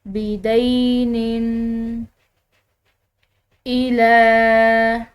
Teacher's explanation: لام کو ہم نے لمبا ادا کیا ہے کھڑی زبر کی وجہ سے، اور ساتھ میں چھوٹی مد ہے تو اس کی وجہ سے ہم نے اس کو لمبا ادا کیا ہے.